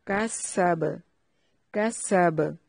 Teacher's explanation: اور با پہ قلقلہ کرنا ہے وقف کی صورت میں